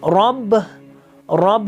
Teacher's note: رب جو ہے را تفخیم ہے، با استفال ہے